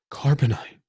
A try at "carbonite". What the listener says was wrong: It sounded like you said carbonate.